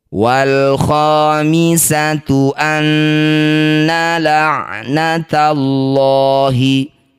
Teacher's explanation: Ada alif diikuti lam sukun disebut bacaan namanya izhar qamariah atau alif lam qamariah. Cara bacanya lam sukun. Baca dengan jelas. · Cara bacanya bunyi nun, ini kita dengungkan dua harokat. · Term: gunnah musyaddadah